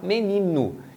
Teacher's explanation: Embora a gente escreva menino com O, geralmente em muitas palavras o O é reduzido para um som de U. Então muita gente vai falar menino.